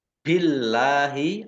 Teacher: Billahi Allahnya dibaca tipis karena harakat di depannya kasrah